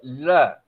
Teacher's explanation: अंदर से निकलने वाली जो प्राणवायु है जीभ के मध्य भाग पे आती है, जीभ मुड़ती है और उसके दोनों पार्श्वों से, मतलब बगल से निकल जाती है। ऐसी स्थिति में ल को हम क्या कहते हैं, पार्श्विक ध्वनि कहते हैं।